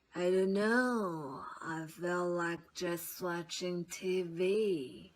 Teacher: her pitch is lower than it would have been and she's bringing in this breathiness in an effort to change the quality of her voice and